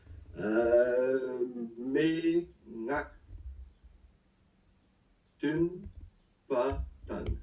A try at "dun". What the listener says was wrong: Dun. C'est dun. Pas tun, c'est dun. À cause du ao. Hein, dun, pas tang.